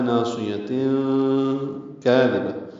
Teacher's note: تنوین کے بعد کاف آنے کی وجہ سے اخفا ہے